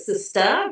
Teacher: she dropped the r in a very canonical way